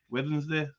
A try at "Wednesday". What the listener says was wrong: No, it's still scousey. You're singing it too much. We've got our voices are, I think, a wee bit more deeper than the scouse voice.